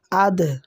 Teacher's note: এখানে দালের জজম দালকে প্রতিধ্বনি অর্থাৎ কলকলা করিয়া পড়তে হয়